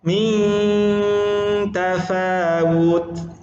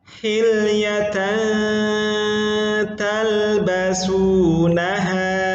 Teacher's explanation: Ujung lidah tidak sampai langit-langit dan hanya menggunakan makhraj rongga hidung. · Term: ikhfa